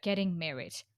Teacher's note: normally when we see getting married, we just say like getting married with falling tone. But here you will notice that uh she pronounced like getting married.